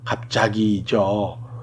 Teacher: 한 단어 안에서 뒷말 첫소리인 예사소리, 지읒이 앞말의 받침 비읍 때문에 된소리를 발음되었죠